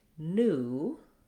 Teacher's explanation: in American English we say new with just the oo sound